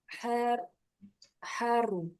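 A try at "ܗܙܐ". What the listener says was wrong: Ini bukan ro. yang enggak ada titiknya. Zain. Yes. Berarti hazo. Iya, dikit lagi.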